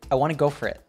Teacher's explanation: the t in it becomes a glottal t